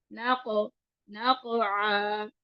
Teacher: काफ जो है वो पीछे से अदा होता है, ठीक है। काफ को आगे से अदा करेंगे तो वो काफ बन जाएगा, तो पीछे नरम तालु को लगाना है इसको।